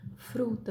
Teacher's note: todos os R's que nós usamos nos encontros consonantais são TEP